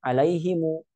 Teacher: Tapi karena dia sukun ketemu sukun, maka takhallus min iltiqa'i sakinainnya dengan cara diberi harakat dhammah pada sukun pertama, alaihimu gitu ya.